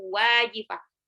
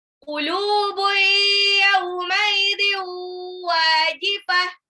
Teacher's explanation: tanwin ketemu waw, itu jadi idgham bi gunnah juga, ditahan. Yauma idhiu wajifah, wawnya matabi'ah 2 harokat, jifah.